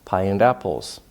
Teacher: you might hear the D because it's linking to the A in apples